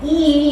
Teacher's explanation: the front of the tongue is raised to a height slightly below and behind the closed front position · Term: long e sound